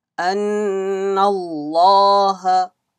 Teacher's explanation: Lam of Allah will be read with full mouth.